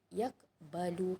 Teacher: Kita tak boleh berhenti yak sahaja, tapi kita baca yaqbalu. Yaqbalu maksudnya kita bunyi tak lantunan tu, bunyi tapi sikit. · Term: qalqalah sughra